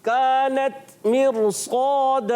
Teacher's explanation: الف مدہ ہے, ایک الف کھینچ کر ادا کرنا ہے